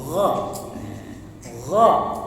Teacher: Ada suara lembut getaran seperti k tapi bukan k